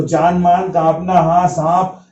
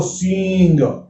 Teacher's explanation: दीर्घ स्वर के साथ में नासिका की जो आवाज होती है वो चंद्र बिंदी अनुनासिक की आवाज होती है